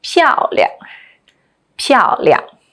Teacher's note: the 亮 is in the neutral, unstressed tone